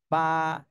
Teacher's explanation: একটু বাতাস বের হবে আলিফ আলিফ আলিফ বাতাস বের হবে বা এটা হলো দুই ঠোঁটের ভিজা অংশ থেকে উচ্চারণ ভিজা অংশ থেকে উচ্চারণ করতে হবে এবং এক আলিফ টান দিতে